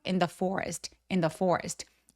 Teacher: forest 할 때 forest라고 l처럼 들리지 않게 알바름은 뒤로 혀를 당겨서 이런 식으로 혀끝이 입천장에 닿지 않게 해 주세요.